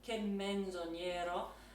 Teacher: Che menzo, that M is going to get doubled.